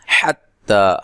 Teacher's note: حا کو واضح نکالنا ہے، تا پر مد اصلی ہے